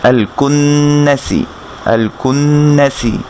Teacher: সিনের মাখরাজ আমরা গত ক্লাসে বলেছিলাম যে আপনার জিহ্বার আগা নিচের দাঁতের গোড়া অথবা নিচের দাঁতের মাঝখানের সাথে লাগিয়ে আপনি সিনকে উচ্চারণ করতে পারেন এবং এরকম চিকন একটা বাতাস আপনার বের হবে